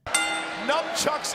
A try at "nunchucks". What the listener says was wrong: It's pronounced nunchucks, you moron. Never got why some people think it's pronounced like the word numb.